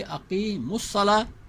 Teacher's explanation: الصلاۃ کا پہلا صاد بھی ساکن اور اقیمو کا واو بھی ساکن، اس واو کو گرا کے پڑھیں گے